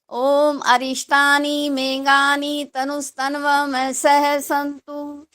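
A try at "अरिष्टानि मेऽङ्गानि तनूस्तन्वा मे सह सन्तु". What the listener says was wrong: तनुस तनवा होता है ये, तनुस तनवा नहीं होता। न में बड़े ऊ की मात्रा है ये। और जो अभी भी मेंगानी बोला है ना, ये भी गलत है। मेंगानी इतनी जल्दी नहीं बोल सकते, मेंगानी लंबा करना पड़ेगा उसको।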